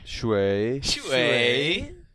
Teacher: Yeah, it's like the third tone. You got to go down and up.